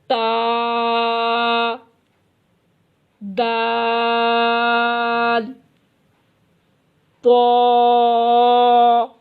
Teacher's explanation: تا، دال، طا زبان کی نوک اور اوپر کے دانتوں کی جڑ سے۔